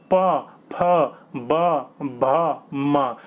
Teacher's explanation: आपके जो होठ होंगे ना दोनों चिपकेंगे फिर खुलेंगे, चिपकेंगे खुलेंगे, इसलिए इनको ओष्ठ कहा जाता है।